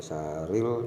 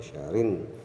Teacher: Ini ada tasjid, kemudian min syarrin, ini ada alif lam syamsiyah, kemudian ada juga tasjid sehingga dibacanya bukan min syaril tapi min syarin, min syarin Jadi alif lamnya tidak nampak, sehingga yang munculnya adalah nun, sehingga syarin, syarin bukan syaril tapi syarin.